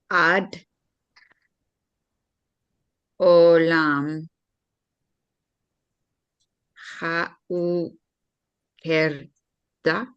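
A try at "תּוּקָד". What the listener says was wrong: Wait, that's a tav at the front. And that's a dalet at the end. Tukad. Tukad. Tukad. Tukad. Long vowel.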